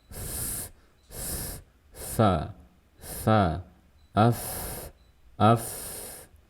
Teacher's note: Yang pertama, sifatnya hams. Harus terdengar ada suara aliran nafas.